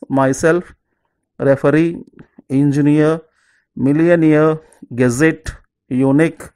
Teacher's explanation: Okay, so the first one is, if the word ends with suffixes self, e, ear, et, ik, self, e, ear, et, ik, put stress on the last syllable. We have to put stress on the last syllable.